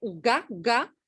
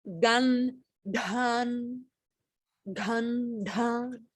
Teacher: So there's no tongue back. So you go from a guttural, ga, ga, and then you go straight into the front of the mouth, gan, dhan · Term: normal dental